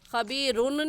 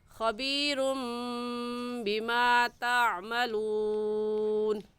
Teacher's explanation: تنوین کے بعد با آ جائے تو وہاں پر اقلاب ہوتا ہے، یعنی اس با کو میم کے ساتھ بدل دیتے ہیں تو ہو جاتا ہے خبیرم، خبیرن نہیں بلکہ اس میم کے ساتھ ملا کر پڑھیں گے خبیرم بما تعملون۔